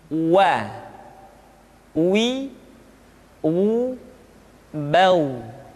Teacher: huruf wa diucapkan dengan cara memonyongkan dua bibir kita.